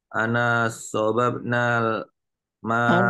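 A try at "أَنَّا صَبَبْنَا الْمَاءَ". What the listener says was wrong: Anna bukan ana. Anna ada tasydidnya Al-Quran itu. Jangan dirubah.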